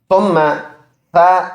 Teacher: ثم نرم حرف ہے، تھوڑا سا زبان کا سرا نکال کر سامنے کے دانتوں کے سروں کے ساتھ لگائے گے تو یہ نرم سا حرف نکلے گا